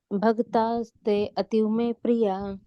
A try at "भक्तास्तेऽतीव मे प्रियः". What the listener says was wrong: So here the a is silent. So bhakta stetiva me priyaha. So it's like that. So it is understood like it is ativa. So bhakta stetiva me priyaha. So it goes quickly.